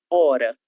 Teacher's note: A palavra hora em português se escreve com a letra H, mas esse H ele será surdo, ele não vai ter nenhum som